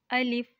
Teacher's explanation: अलिफ हलक के ऊपर वाले हिस्से से अदा होता है